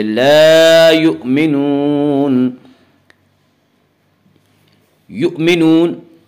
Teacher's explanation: واو مدہ اس واو کہتے ہیں جو واو ساکن ہو اور اس سے پہلے پیش ہو، اور واو مدہ کو ایک الف کے برابر کھینچ کر پڑھیں گے